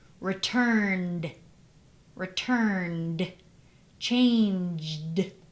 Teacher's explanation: N is a voiced sound, so ed is going to sound like d